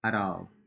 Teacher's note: you can change the T to D.